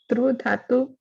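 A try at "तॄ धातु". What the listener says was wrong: dhatu, not through dhatu. Through dirgha.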